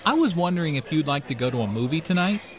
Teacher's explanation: notice how the question goes up at the end which shows that he is not overly confident